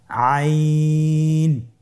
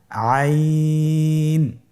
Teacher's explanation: আইন হরফটি কণ্ঠনালীর মধ্যখান থেকে উচ্চারিত হয়।